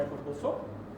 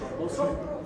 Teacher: The word herbal had a very short vowel in the second syllable, and soap lost the second target in the diphthongium.